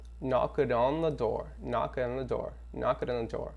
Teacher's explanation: A gente vai emendar o N com o E.